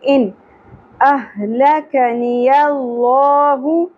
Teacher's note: اگے حمزہ اگیا حروف حلقے میں سے ان احلکنی اللہ اہ ہا اقصی حلق سے ادا ہوگا لک نی یہ تینوں سنگل حرکات ہیں زیادہ نہیں کھینچنا لکنی · نون ساکن پہ اظہار ہوگا اگے حمزہ اگیا حروف حلقے میں سے